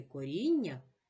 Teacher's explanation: у слові коріння є подвоєні букви н вони позначають м'який подовжений приголосний звук нь